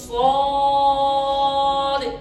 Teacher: جو دال ہے اس پر قلقلہ کر دینا، اس کو حرکت دے دینی ہے، ہلا دینا ہے